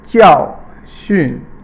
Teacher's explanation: 教 is fourth tone and 训 is neutral.